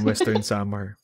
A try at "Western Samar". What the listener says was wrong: Western Samar, pero walang hard R. Can't even pronounce the place properly.